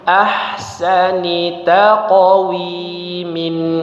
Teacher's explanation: huruf qof lagi dipantulkan ya